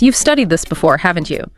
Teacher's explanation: that haven't you up it goes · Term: Tag questions, tag questions